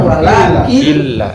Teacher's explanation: Enggak dianggap nunnya, hilangin aja nunnya. Langsung wala Killa. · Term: idgham bilaguna